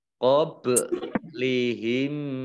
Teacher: mim sukun bertemu dengan huruf mim, idgham mutamasilain atau idgham mimi